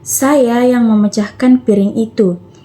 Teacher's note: Tekanan pada kata saya menekankan bahwa perilakunya adalah saya, bukan orang lain.